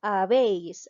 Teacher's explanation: Nos damos cuenta que la mayor fuerza de voz recae en la sílaba veis, ¿ya? Habéis está recayendo en la sílaba 1, es decir, en la última sílaba.